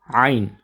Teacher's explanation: اگلا حرف ہے عین، عین جو ہے یہ خاصا محنت طلب حرف ہے، ہا اور عین یہ دونوں ایک ہی جگہ سے ادا ہوتے ہیں، یعنی حلق کے درمیان سے یہ ادا ہوتے ہیں